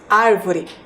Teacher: Ao realizar a pronúncia da palavra árvore, podemos perceber que a sílaba mais forte é a antepenúltima.